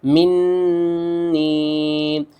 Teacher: یہاں پر ہم نے اس نون کے اوپر بھی غنہ کرنا ہے، اس میم کے اوپر بھی غنہ کرنا ہے اور اس نون کے اوپر بھی غنہ کرنا ہے۔